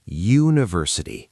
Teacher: That first sound, U, is actually the same sound as the letter Y, and Y is a consonant sound. So, a university, not an university.